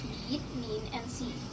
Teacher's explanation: In the IPA chart, this vowel is front, high, and unrounded, meaning that the tongue height to make the sound is high, and the part of the tongue involved is the front part. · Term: long vowels